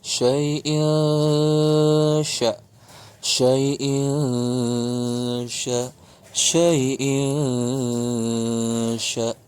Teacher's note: Ini adalah ikhfa, tanwin in bertemu shin.